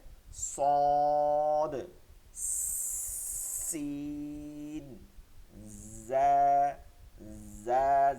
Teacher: জিহ্বান আগা সামনে নিচের দুই দাঁতের আগার সঙ্গে লাগাইয়া শব্দ করে করে পড়তে হবে